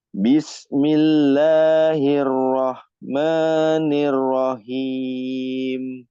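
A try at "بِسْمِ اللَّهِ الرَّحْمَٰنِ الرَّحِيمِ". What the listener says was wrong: Ya, di huruf ha-nya dihaluskan lagi, ya. Bismillahirrahmanirrahim. Jadi bedakan huruf ha besar sama ha kecil, ya. Kalau ha besar ya lebih kasar kalau bisa dibilang ya.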